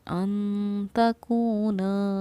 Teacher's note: اور نون ساکن پر ہم نے اخفا کیا کیونکہ نون ساکن کے بعد حروف اخفا میں سے تا رہا ہے. اخفا یعنی ہم نے الف کی مقدار کے برابر اس کو ٹھہراؤ کے ساتھ پڑھا ہے